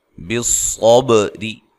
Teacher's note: सौद को खूब मोटा अदा करना है, बा पे कलकला करना है